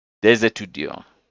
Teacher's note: But because of what we call liaison between the two, this is ending with a consonant and this one is starting with a vowel, we pronounce this S like it's a Z just for the beauty of it. Des étudiants.